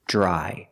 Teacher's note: Dr together makes a j sound like juice and jump